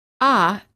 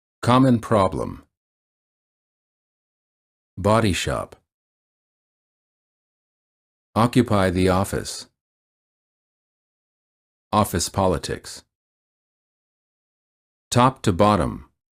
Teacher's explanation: For the ah sound, the lips are apart as if you're yawning. The lips are not rounded. The tongue is relaxed and flat at the bottom of the mouth. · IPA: /ɑ/